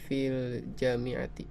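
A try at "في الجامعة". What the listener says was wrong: Fil jami'ati, ja-nya panjang.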